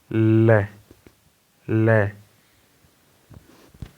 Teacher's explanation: और जब ल को हम बोलते हैं तो क्या होता है ल का उच्चारण करते हैं तो हमारी जो सांस है वह जीभ के बगल से गुजरती है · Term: पार्श्विक व्यंजन